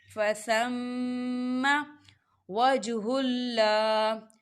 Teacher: دیکھیں میم مشدد ہے، میم پر غنہ ہوگا.